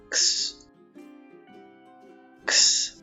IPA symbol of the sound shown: ks